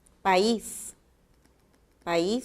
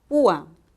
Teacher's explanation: El hiato acentual sucede cuando tenemos vocales de distinta clasificación, cerrada, abierta, abierta, cerrada, pero la vocal cerrada tiene que llevar la mayor fuerza de voz y la tilde